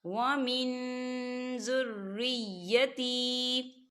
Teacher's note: قَالَ وَمِن ذُرِّيَّتِي، وَمِن ذُرِّيَّتِي، دیکھیں یہاں نون ساکن ہے، نون ساکن کے بعد زال آ رہا ہے، تو یہ اکفا کا ورڈ ہے، تو یہاں اکفا ہوگا، ہم نون ساکن کی آواز کو ناک میں چھپائیں گے